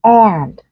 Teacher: Còn với Anh Mỹ thì trong trường hợp này các bạn nhìn thấy là cái âm a nó đọc căng và nó sẽ bị nasalized, nó sẽ bị hơi bị mũi một chút bởi vì nó ảnh hưởng với cái âm mũi đằng sau là âm n đó. Thì nghe nó sẽ hơi giống như là thế này, vị trí miệng của mình không hề thay đổi nhưng mà nghe nó nửa a nửa e, tức là nó nửa nọ nửa kia. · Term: âm e bẹt